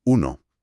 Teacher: la U, que necesita que los labios se proyecten muy redondeados hacia afuera, como si estuvieras apuntando algo.